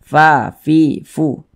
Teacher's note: Fa itu adalah salah satu huruf yang memiliki sifat Hamas jadi kalau kita mengucapkan huruf FA itu ada nafas yang mengalir ketika Kita mengucapkannya